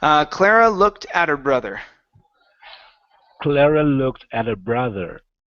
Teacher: I paused a little bit on looked instead of moving straight through